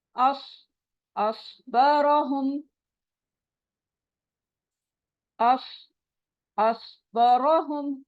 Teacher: जबान की नोक को नीचे के दांतों के किनारों से लगाएंगे और जबान को पीछे से उठा के पढ़ेंगे।